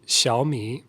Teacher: So we got two third tones. So what happens when you have two third tones is the first part of the word changes to a second tone. It's just a rising tone.